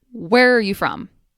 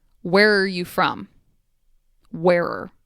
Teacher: the r gets combined with the where so it becomes wearer